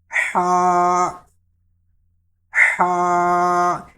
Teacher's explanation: یہ ہا یہ حلق کے درمیان سے ادا ہوتا ہے، تو اس میں یہ والی ساؤنڈ جو ہے نا یہ ضرور نکلنی چاہیے۔